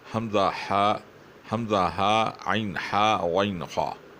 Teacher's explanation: حمزہ ہا عین ہا غین خا، یہ حروف حلقی ہیں کیونکہ یہ حلق سے نکلتے ہیں